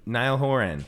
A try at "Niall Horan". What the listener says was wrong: I think it's just Niall Horan. You're putting a lot of emphasis on like weird